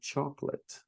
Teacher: so we don't pronounce that second O